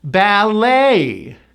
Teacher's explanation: This word comes from the French. We do not pronounce the T. It is simply the A sound, which you have to shape. A, and the stress is on the 2nd syllable.